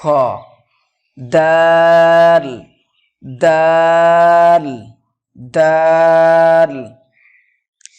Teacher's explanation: জিভের আগা এবং সামনের উপরের 2 দাঁতের গোড়ার সাথে লাগিয়ে উচ্চারিত হয় দাল